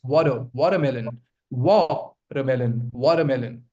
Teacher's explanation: There's no T sound coming in.